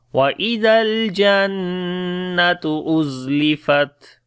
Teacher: Zal we read in soft sound, on the Lam there is Tawassut quality. On the Noon we make Ghunna as there is Shadda sign.